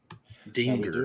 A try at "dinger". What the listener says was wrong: Why are you pronouncing the G so hard?